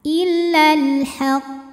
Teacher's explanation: karena huruf q sukunnya itu karena berhenti membaca maka ini kita pantulkan pantulannya lebih besar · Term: Qalqalah Kubro, qalqalah kubra